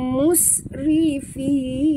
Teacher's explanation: Hembus bunyikan sofir pada huruf sin yang mati.